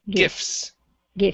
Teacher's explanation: Right here. So the T in this word is silent. We go from the F to the S.